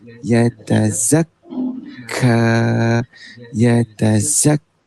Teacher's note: Okay, untuk sabdu, dia tak boleh lepaskan bunyi hamas kaf. Okay, dia mesti kena hold kaf. · Dia kena hold dan press dekat kaf.